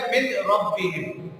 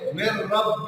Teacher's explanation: جیسے من ربہم، اب یہ لفظ ہے من ربہم، میم کے بعد نون ساکن ہے، اس کے بعد حروف یرملون میں سے را آ گیا تو اب نون کی آواز کو را میں ملا دیا مر، اور پھر نون کی آواز بھی ختم ہو گئی اور یہاں غنہ بھی نہیں ہوا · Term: ادغام بلا غنہ